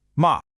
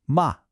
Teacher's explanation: It's not a slow drift down, it is a sudden drop. Start your hand high, and just slice it down toward the floor. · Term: fourth tone